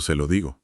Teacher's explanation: al mutar ese primer pronombre hacia la S, creas un sonido frictivo continuo. El aire fluye sin bloqueos en el C y prepara el terreno para que la lengua aterrice suavemente en el lo digo.